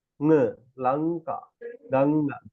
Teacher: The tip of the tongue doesn't come to the teeth or the palate or the lips. It goes back, right? N.